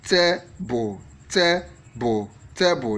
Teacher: the word that has the stress on the first syllable